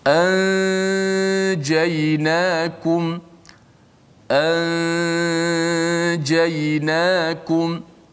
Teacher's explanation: nun itu masih kekal di gunnah pada hidung. Adapun makhrajnya disembunyikan di sisi huruf jim, bunyi begini, anjaynakum, anjaynakum. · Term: ikhfa